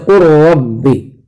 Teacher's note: قر ربی میں لام کو بالکل جو ہے را بنا دیا گیا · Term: ادغام تام